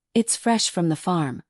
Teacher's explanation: they're stressing fresh because that's what they want you to remember